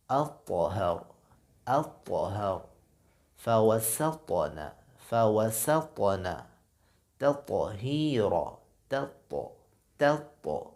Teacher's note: طا اگر ساکن ہوگا تو یہاں بھی آواز بند ہوگی پھر ظاہر ہوگی، جیسے الطہر، الطہر، فوسطن، فوسطن، تطہیر، تط، یعنی طا میں آواز ظاہر ہوگی۔ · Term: قلقلہ